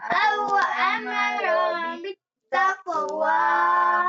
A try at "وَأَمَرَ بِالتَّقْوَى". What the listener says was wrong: أو أمر টান দেন কেন টান আছে তাহলে দেন কেন তাড়াতাড়ি হ্যাঁ أو أمر بالتقوى